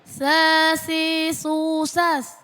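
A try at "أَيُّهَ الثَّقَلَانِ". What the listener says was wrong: Jangan kedengaran S-nya. Bukan sa, bukan ya. Sakolan. Masih kedengaran S-nya. Sakolan. Qafnya qolan sakolan. Jangan sampai ini bukan huruf sin. Tapi sakolan.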